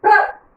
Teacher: रा की साउंड पूरी आएगी, पा की आधी